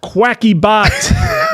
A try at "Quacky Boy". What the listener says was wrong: Boy, Quacky boy. It's an I there.